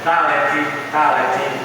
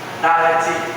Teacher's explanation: você percebe que a língua vai lá na arcada superior e toca atrás do dente